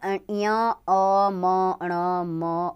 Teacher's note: नासिका में ञ, अ, म, ण, म और अ और अनुस्वार आते हैं। नाक इनका उच्चारण स्थान है।